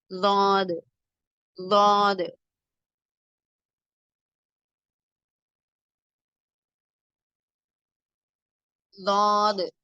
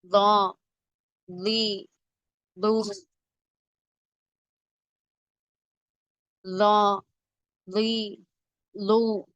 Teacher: நாவின் ஓரம் மேல் கடவாய் பற்களின் வலது அல்லது இடது ஈறுகளை தொட வேண்டும். குரல் அழுத்தமாக வாய் நிரம்ப ஒலிக்க வேண்டும்.